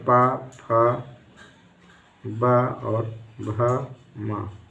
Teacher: पद्यमानीय वर्ण, इनका उच्चारण स्थान ओष्ठ या ओंठ, जो भी होता है, मतलब ओंठ से उच्चारण स्थान होता है, इनके उच्चारण स्थान में ओंठ स्पर्श करते हैं